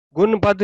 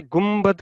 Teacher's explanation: फिर हमने सीखा था कि इकलाब का रसूल, कि नून साकिन और तनवीन के बाद, अभी आज हमने प्रैक्टिस भी किया कि लेटर बा आए, हरफ बा मीम आए, तो वो आवाज नून की मीम में तब्दील हो जाती है। उर्दू में भी हम एक अमूमन कहते हैं गुम्बद, तो गुम्बद में मीम लिखा नहीं होता, लेकिन अक्सर हम देखते हैं कि गुम्बद गाफ नून बे दाल होता है, तो वहां भी हम गुन गुनबद नहीं कहते, गुमबद कहते हैं, वहां मीम की आवाज ऐसे आती है।